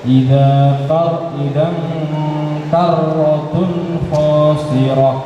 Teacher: Roknya agak tebalkan ya, kalau rok tasdid itu agak tebal.